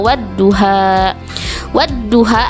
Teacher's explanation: lamnya tidak dibaca tetapi lebur atau masuk ke huruf Syamsiah yang ada di depannya contohnya wadduha wadduha antara Waw dan zhau ini ada alif lam · masuk ke huruf Syamsiah yang ada di depannya contohnya wadduha wadduha antara Waw dan zhau ini ada alif lam mati yang tidak dibaca karena dimasukkan ke dalam huruf DHA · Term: alif lam syamsiah